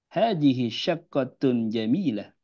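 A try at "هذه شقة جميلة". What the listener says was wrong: Allah, jamil, mumtaz, qira'atun mumtaz.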